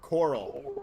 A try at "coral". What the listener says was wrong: Every time you say it sounds like you're saying Carl.